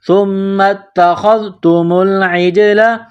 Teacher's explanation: عین کو جیم کے ساتھ ملانا ہے، جیم میں قلقلہ کریں گے